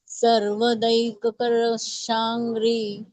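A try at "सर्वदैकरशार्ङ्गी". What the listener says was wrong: नाही शारंगी र आधी येतो सगळ्यात शारंगी सारख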